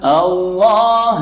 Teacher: lam jalala tafkhim, lafaz Allah didahului fathah, tebal bacanya